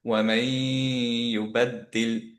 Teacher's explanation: এখানে দুইটা ইয়া আছে অ্যান্ড হচ্ছে দুইটা ইয়ার মতো চিন্তা করব, অ্যান্ড হচ্ছে নুনের গুণাটা যেহেতু ফরওয়ার্ডেড হয়ে গেছে আমরা এখানে গুণা দিলাম